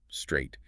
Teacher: You have to hiss the s, tap the t behind the teeth, and immediately curl the tongue backward for the R, straight. It's three distinct micro movements in a fraction of a second. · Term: consonant cluster